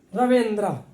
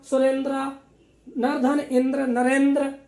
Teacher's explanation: ये ऐसा गुण है ए में कि आ और ई दोनों का उच्चारण स्थान रखता है।